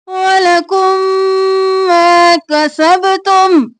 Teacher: मा अलिफ मद्दा है खींचेंगे